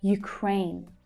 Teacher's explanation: The second syllable is the stressed one.